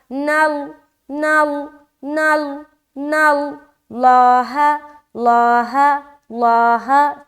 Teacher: نون باریک رہے گا لیکن لام جیسے ہی ملے گا نون لام سے لام موٹا ہو جائے گا